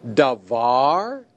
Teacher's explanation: In this word, the tonic syllable is var. That's the syllable that receives the accent. The pretonic syllable is da.